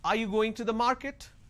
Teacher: So when I say, are you going to the market, there is a rising tone.